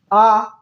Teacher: और पश्च, ये जीभ के पश्च स्थान से निकलता है, इसलिए इसको पश्च स्वर कहा जाता है। इसको बोलने में मुख विवर पूरा खुल जाता है, आ, इसलिए इसको विवृत बोला गया है।